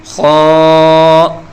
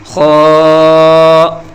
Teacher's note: اب دیکھیے اس حرف کے اوپر ایک نقطہ ہے اور اسے کہتے ہیں خاء۔ یہ ایک موٹا یعنی پر پڑھا جانے والا حرف ہے۔ اسے حلق کے اوپر والے حصے سے پڑھیں گے